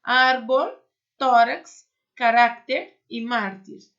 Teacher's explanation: a sílaba mais forte tem que ser a penúltima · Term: paroxítonas